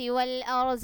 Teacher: ضاد موٹے حروف میں سے ہے، اس لیے ہم نے اس کو موٹا کر کے پڑھا